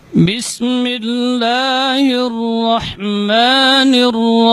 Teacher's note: Ya, itbaq syafatain inda nutqi ba, jadi merapatnya kedua bibir ketika mengucapkan huruf ba itu lebih kuat dibandingkan huruf mim.